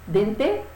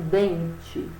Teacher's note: o den é a sílaba mais forte. É a penúltima sílaba.